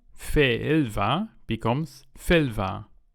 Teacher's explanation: If you use fì- on a noun that already starts with ì, like ìlva, then the two ì sounds contract into one.